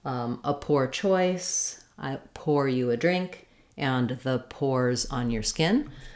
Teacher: you can hear as I'm saying these in American English they're all going to have that or diphthong